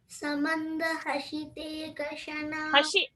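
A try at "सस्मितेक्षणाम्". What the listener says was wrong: Hashi cannot happen. Sha cannot come. In Sa's place, we have to maintain Sa only. Samanda hasite kshana. So hasite kshana.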